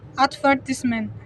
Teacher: For instance, in British English, the word advertisement is stressed on the second syllable advertisement. In American English, it's often stressed on the first syllables advertisement.